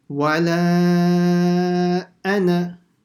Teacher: First one is the wala with the mud. Then ana, even though it has an alif, you don't stretch that.